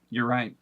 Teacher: a lot of them here in the American south will say “yur” instead of “your.”